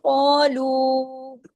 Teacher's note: क heavy letter है। उसके साथ अलिफ लगा वो भी हैवी हो गया।